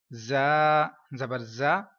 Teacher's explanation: زا کو میں نے سی ٹی کی آواز کے ساتھ پڑھا ہے کیونکہ زا حروف صفیری ہے